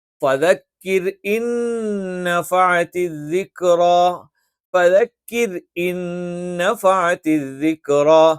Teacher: നാവിന്റെ മധ്യഭാഗം മുകളിലേക്ക് ഉയരാൻ പാടില്ല. ദിക്റ എന്ന് പറയുന്നിടത്ത് റാഇന് ഫതഹാണ്. അവിടെ നമ്മൾ തഫ്ഖീം എന്ന് പറയും. അത് ഉച്ചരിക്കുന്ന സമയത്ത് നാവിന്റെ മധ്യഭാഗം മുകളിലോട്ട് ഉയരേണ്ടതുണ്ട്.